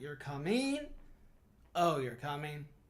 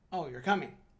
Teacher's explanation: a variety and interest to your speech the sentence you're coming with a rise pitch can imply a surprise that you're coming of oh you're coming while falling pitch can indicate a simple statement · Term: intonation